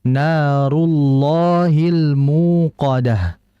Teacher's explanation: Akan tapi dalam kondisi dalam lafzul jalalah kalimat Allah, bila mana ada huruf sebelumnya berharokat fathah atau dhammah, dan kita lihat di sini pada ayat yang ke-6 itu harokat sebelumnya ada dhammah, rullah, maka dibaca dengan tebal lamnya